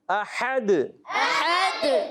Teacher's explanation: ہا نکالنا ہے، حلق کے درمیان والے حصے پہ زور دیں گے